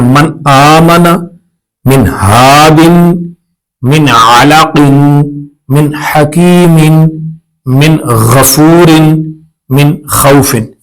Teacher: تو پتہ یہ چلا کہ نون ساکن اور تنوین میں اگر ان حروف کے بعد حروف ہلکی میں سے کوئی حرف آ جائے تو ہم اظہار کریں گے، یعنی غنہ نہیں کریں گے، ظاہر کر کے پڑھیں گے، آواز کو چھپائیں گے نہیں، یعنی ناک میں نہیں لے کر جانا۔